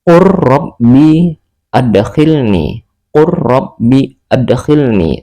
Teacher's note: Maka cara membacanya langsung dimasukkan ke dalam huruf ro. · Tidak lagi mengikuti tulisan qul rabbi adkhilni, tetapi langsung qur rabbi adkhilni tanpa berdengung. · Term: idgham mutaqaribain